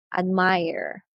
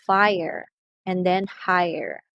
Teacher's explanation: we also have the ai plus the schwa sound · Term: triphthong